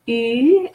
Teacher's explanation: Sur, U in French is pronounced U, and this is something that's harder for some to pronounce. The lips are held for U, and inside of the mouth we say E. So I hear a lot of my clients are trying to say E instead of U, because E is really quite strong in this pronunciation, but it's not E, it's U.